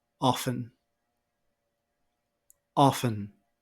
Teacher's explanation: many people omit the T sound in this word